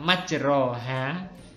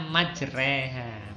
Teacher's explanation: Dari fathahnya agak miring dikit ke kasroh gitu ya, sekitar 2/3-nya. Bisa juga diartikan memiringkan bacaan fathah ke arah bacaan kasroh. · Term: imalah